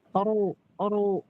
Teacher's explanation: berharakat dommah itu juga dibaca tebal